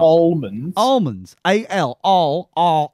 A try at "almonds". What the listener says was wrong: No, the L is silent. It's almonds.